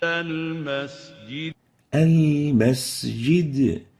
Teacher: So we have to properly give the sin its whistle characteristic.